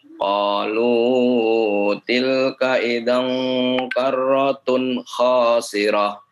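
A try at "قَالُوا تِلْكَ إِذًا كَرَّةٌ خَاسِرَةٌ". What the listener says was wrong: Baik, qalunya jangan terlalu panjang, bagus. Dicoba lagi.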